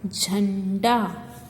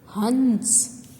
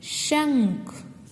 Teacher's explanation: अनुस्वार वाले शब्द बोलते समय नाक पर जोर दिया जाता है।